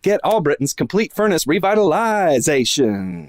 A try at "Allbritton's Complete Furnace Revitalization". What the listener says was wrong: Maybe a little more on the zation.